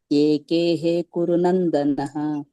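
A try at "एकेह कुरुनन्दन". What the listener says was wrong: ನೀವು ಏಕೇಹೆ ಅಲ್ಲ ಏಕೇಹ ಮತ್ತೆ ಕುರುನಂದನಹ ಅಲ್ಲ ಕುರುನಂದನ ಅಷ್ಟೇ ಇದೆ ಅಲ್ಲಿ ವಿಸರ್ಗ ಇಲ್ಲ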